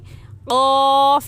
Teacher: तो हलक के उस आखिरी हिस्से को जहाँ पर खाल लटकी हुई है, उस आखिरी हिस्से को ऊपर हलक में तालू यानी हलक में लगाने से क़ाफ निकलता है। ज़बान का आखिरी हिस्सा जो कव्वे के पास है, ऊपर तालू यानी हलक में लगाने से क़ाफ निकलता है।